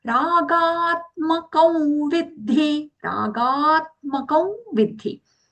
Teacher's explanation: It will be soft aghata or saumya aghata because it is coming on a long ga sound. Ragatmakam kam nasal v sound for the anuswara there because anuswara is followed by the letter v in the word vidhi vidhi.